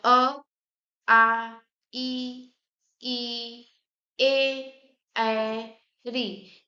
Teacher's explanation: आपका ओठ जो है गोला मतलब वृत्त के आकार से नहीं खुल रहा है